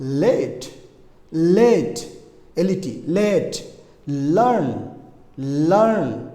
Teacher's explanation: জিহ্বার অগ্রভাগ উপরের দাঁতের মাড়িতে স্পর্শ করতে হবে